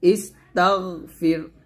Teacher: না আমরা অনেকে গইন উচ্চারণ করতে গিয়ে কলকলা করে ফেলি তো কলকলা করা যাবে না গইনটা মোটা করে উচ্চারণ করতে হবে